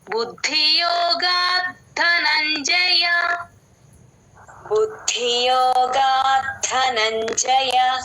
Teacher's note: ద కింద ద వత్తు మహాప్రాణం రెండు వినిపించాలి